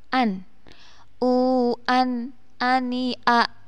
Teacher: Di sini ada nun sukun yang bertemu dengan alif atau hamzah, maka harus dibaca jelas